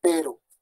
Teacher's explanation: la vibrante simple de pero, ¿no? Solo vibra una vez, pero. ¿Sí?